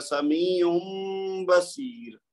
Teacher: یہ نون کی آواز غائب ہو جائے گی اور اس کی جگہ میم کی آ جائے گی